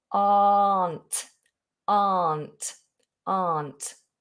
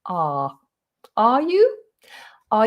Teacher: if you really open that up and ignore the letter r then you you'll really sound british that's a really british sound ah are you are